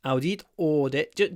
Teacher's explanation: you need to change the ow to or